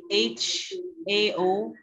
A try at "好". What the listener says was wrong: Yes, miss, but the tones.